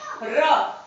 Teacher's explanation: ठीक है, एक आता है आपका लुंठित, लुंठित का मतलब है लुढ़कता हुआ, यानी तो लुंठित, और लुंठित में आता है र, आप देखिए र बोलकर देखिए तो जीभ उलट जाती है, र, तो इसे बोलते हैं लुंठित वर्ण।